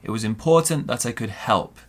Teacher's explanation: Stress on important, stress on help, or the verb that comes after it.